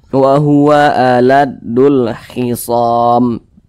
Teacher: di samping huruf k itu termasuk salah satu huruf qamariah maka alif lam berjumpa dengan huruf k hukumnya adalah alif lam qamariah maka huruf lamnya dibaca izhar dibaca jelas · alif lam qamariyah, maka huruf lamnya dibaca izhar, dibaca jelas